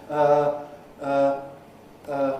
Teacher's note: in the middle of the vowel area it's not close it's not open it's not front it's not back